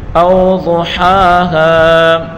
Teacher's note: ضاد کو پر پڑھیں گے اور حا اور ہا دونوں کو ایک ایک الف کی مقدار کھینچ کر پڑھیں گے۔ او ضحاہا، حا اور ہا دونوں میں فرق ہونا چاہیے۔